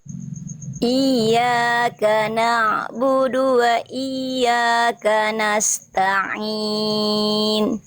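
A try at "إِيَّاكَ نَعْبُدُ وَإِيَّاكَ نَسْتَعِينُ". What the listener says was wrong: Sip Yang ini lebih bagus ya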